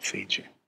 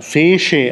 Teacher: Wird dann Fece ausgesprochen, weil das, also eigentlich müsste es Tsch sein, aber in Mittelitalien schwächt sich das Tsch zwischen Vokalen ab und wird zu Sch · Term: Lenierung